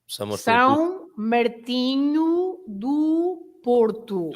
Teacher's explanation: Every O at the end is U.